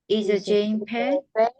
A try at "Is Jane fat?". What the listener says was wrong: F 발음은 fat 이래야 되죠. is Jane fat? fat. 앞에 육하원칙이 있으면 뒤가 내려갑니다. 없으면 올라가요.